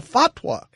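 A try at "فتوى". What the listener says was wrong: Oh, it's just like you are emphasizing the final syllable unnecessarily.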